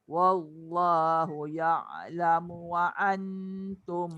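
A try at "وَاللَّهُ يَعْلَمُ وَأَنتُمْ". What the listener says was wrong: Jangan wa'an, nanti jadi ain. Ya'lamu wa hamzah. yang ain tu kena tekan, itu ain. Dia jadi terbalik. Wallahu ya'lamu wa antum.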